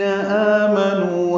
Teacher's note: یا پہ مد منفصل ہے، حمزہ کو یا سے ملاتے ہیں، معروف طریقے سے ادا کرتے ہیں، ہاں اقصی حلق سے ادا کرتے ہوئے لام سے ملاتے ہیں، دال نرمی سے پڑھتے ہیں، اور ذی یا مدہ ہے 2 حرکات لمبا کرتے ہیں۔ آمنو میں آ میں مد بدل ہے 2 حرکات لمبا کرتے ہیں، نو میں وہ مدہ ہے مد اصلی 2 حرکات لمبا کرتے ہیں۔